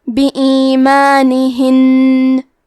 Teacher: کلمت بِایمانہن میں نون پہ تشدید ہے تو ہم تشدید کو غنہ سے پڑھیں گے